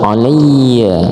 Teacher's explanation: alaiya harus ditekan karena ada tasdid